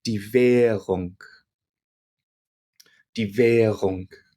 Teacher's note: when an R comes after a vowel sound, it's not pronounced in its normal form, but it becomes very, very soft to the point where you almost don't hear it.